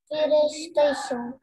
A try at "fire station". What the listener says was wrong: Yes.